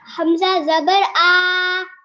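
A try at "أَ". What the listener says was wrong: हमजा जबर आ, जबर को लंबा नहीं करते। हमजा जबर आ।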